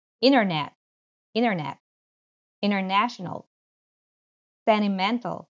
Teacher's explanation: When you have this NT combination, especially in American English, that T tends to go away. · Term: omission of the T